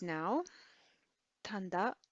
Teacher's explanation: you'll tend to hear an n sound before a t like that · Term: nasalization